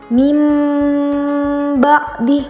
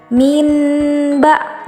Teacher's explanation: Mim ba'di, di situ ada nun sukun bertemu dengan ba. Nun sukun itu harus diganti dengan suara mim. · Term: iqlab, iklab